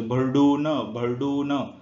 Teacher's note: उच्चार करताना अ प्लस उ मधील फक्त उ चा उच्चार दिसतोय आपल्याला. कशात दिसतोय, भरडून, भरडून. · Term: पररूप स्वर संधीचं